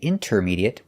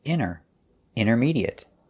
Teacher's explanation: we notice that the t is silent we don't say intermediate we say inner intermediate and the a